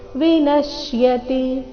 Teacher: ವಿನಶ್ಯತಿ ನ ಮೇಲೆ ಆಘಾತ ತಿ ರಸ್ವ